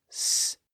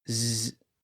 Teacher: and then we constrict those vocal folds to make them vibrate the sound goes from s to Z it goes from a whisper to a buzz